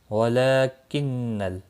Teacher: لام کے اوپر کھڑی زبر ہے، ایک الف کے برابر کھینچ کر پڑھیں گے۔ رو زبر کی وجہ سے پر پڑھا جائے گا۔